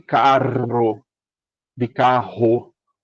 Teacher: aquela galera do Sudeste que utiliza ou a do Sul ou a do Sul, como por exemplo na região mais fronteiriça lá do Rio Grande do Sul, que usam o o R bem forte, não é não é esse aqui, é o R que a gente aqui no Nordeste pronuncia como uma aspiração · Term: R de carro